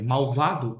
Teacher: o L tem som de U